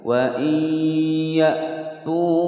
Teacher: wawu sukun sebelumnya harokat dhammah mad tabi'i dibaca panjang 2 ketukan